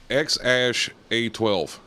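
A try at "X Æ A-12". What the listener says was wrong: That's not how you pronounce that second letter. That second letter, it's pronounced A, like I, but like yeah, I. it's Icelandic.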